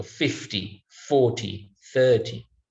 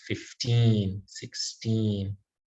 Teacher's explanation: the tens we will put stress on the first syllable